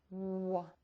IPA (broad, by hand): w